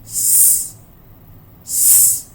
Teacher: Bunyi huruf sin. Nafas sahaja yang keluar, suara tak keluar. Suara yang bunyi tadi ni apa dia? Ini bunyi nafas yang dihembus kuat di hujung lidah.